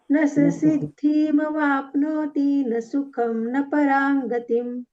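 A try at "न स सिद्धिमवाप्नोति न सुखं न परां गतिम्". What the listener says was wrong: कुठे चुकतय कळलं का तुम्हाला सिद्धीती असं नाही म्हणायचं जे दीर्घ आहे ना ते दीर्घ म्हणायच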